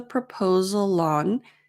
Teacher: the consonant sound at the end of proposal the L Sound and the vowel sound o of on links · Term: linking